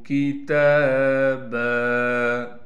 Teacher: با پر دو زبر ہونے کی وجہ سے جب با پر وقف کریں گے تو با کو ایک زبر دے کر با کو ایک الف کی مقدار کھینچیں گے۔